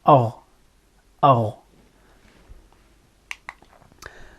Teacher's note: It is produced by narrowing the passageway between the back of the tongue and the velum. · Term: Ghayn